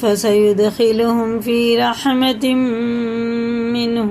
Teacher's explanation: تنوین کے بعد میم پہ شد ہے، یہ بھی غنہ کر کے پڑھیں گے، اور یہ ادغام ہوئے گا، یہ بھی غنہ ہی ہوگا.